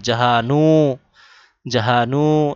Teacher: পালনে ওয়ালাহে যিনি সমস্ত জগতের পালনকারী লালন পালনকারী এইযে এখানে জাহা হা এর পর একটা টান দিতে হবে নু এর পর একটা টান দিতে হবে সাথে গুন্নাও করতে হবে